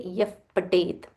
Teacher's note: Tha Mahaprana. So whenever the visarga is followed by pa or pha, we join it together and we say yaf patet.